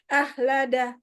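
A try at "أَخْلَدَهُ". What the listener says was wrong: Saya saya perbaiki khnya.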